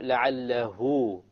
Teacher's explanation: Two harakas. Why? Because There is a movement before, haraka before, and a haraka after, and there's no hamza.